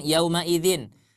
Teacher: huruf Ain keluar dari tenggorokan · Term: izhar halqi